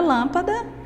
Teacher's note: Na palavra lâmpada, a lã é mais forte, ou seja, ela é a sílaba forte dessa palavra. É aquela que é pronunciada com mais intensidade.